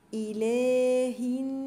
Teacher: الف صغيره كده على اللام دي اسمها الف خنجريه بمدها حركتين · دي اسمها الف خنجرية بمدها حركتين، اله الناس، ومنساش الغنة بتاعت النون المشددة.